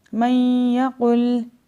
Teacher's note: اب جوڑ کرتے ہوئے نون کو نہیں پڑھیں گے، صرف یا کو پڑھیں گے، لیکن جب ہم اس کو روانگی سے پڑھیں گے تو نون کو غنہ کرتے ہوئے یا کو پڑھا جائے گا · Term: ادغام مع الغنہ